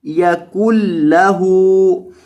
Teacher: یہ جو نون ہے ادغام کی وجہ سے اس کو یہاں آپ نے نہیں ادا کرنا، کاف کو لام کے ساتھ ملانا ہے